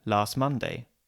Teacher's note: we drop the T from last